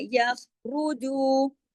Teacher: دو حرکات کھینچ کر، کیونکہ اس کے ساتھ واؤ مدہ ہے